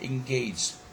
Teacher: the stress falls on the last syllable, okay, gauge, but dis is also a stress syllable, though a secondary one, but it is good stress.